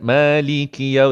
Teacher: Liki pendek Jangan dua harakat.